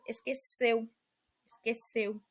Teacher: esqueceu a letra e é pronunciada com o som fechado